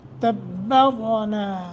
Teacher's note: را ساکن ما قبل زبر ہے، اس زبر کے اعتبار سے را کو موٹا کریں گے